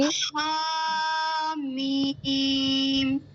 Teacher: ہا کو تھوڑا سا حلق سے ادا کریں